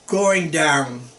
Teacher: you want to stress that it's very down your voice also goes down a lot